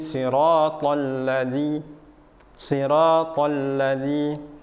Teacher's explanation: huruf za-nya ujung lidah bertemu dengan gigi seri atasnya